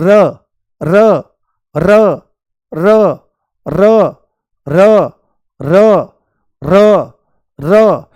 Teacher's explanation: लुढ़कते हुए और सीधे ऊपर वाले मसूड़े में जाकर के ये लगती है